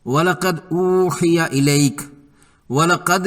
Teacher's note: وَلَقَدْ میں دال ساکنہ پر کلکلہ ہوگا